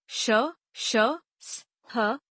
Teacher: जिन व्यंजनों के उच्चारण में वायु मुख से रगड़ खाती है और गर्म होकर बाहर निकलती है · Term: ऊष्म व्यंजन